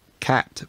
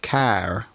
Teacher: the first step was lengthening of the Trap vowel before ER in London you had cat with a short vowel but care with a long vowel